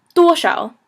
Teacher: shao is that kind of elusive fifth tone or no tone. So basically, you just kind of pronounce shao quickly.